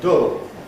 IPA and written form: dʊl (dull)